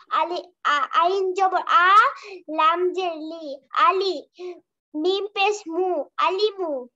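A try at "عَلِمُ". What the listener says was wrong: মাশাআল্লাহ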